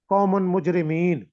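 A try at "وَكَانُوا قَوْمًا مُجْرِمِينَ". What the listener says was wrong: ہاں جی، قومم مجرمین پڑھیں گے، قومن مجرمین نہیں پڑھیں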